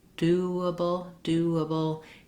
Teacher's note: as you're moving from that rounded oo do to the unrounded a do do that there's a little bit of a w Glide that comes in there that's just because my mouth is round for the ooh and · you should be hearing that kind of gliding wo sound in doable